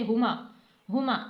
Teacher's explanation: हमें इस बात का खास ख्याल रखना है के हा को सीने से अदा करना है।